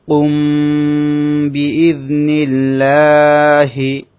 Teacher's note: মিম সাকিনের পর বা এসেছে তাই এখানে মিমটা গুন্না হচ্ছে এটা এভাবে গুনাহ করাটাকে ইখফা বলবে মিম সাকিনের ইখফা কুম বিজনিল্লাহি